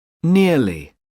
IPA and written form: ˈnɪəli (nearly)